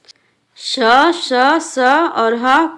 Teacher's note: इन व्यंजनों के उच्चारण में मुंह से गर्म हवा निकलती है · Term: उष्म व्यंजन